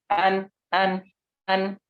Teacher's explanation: letak keluarnya huruf nun itu di ujung lidah bikin ujungnya dengan gusi atas gigi seri atas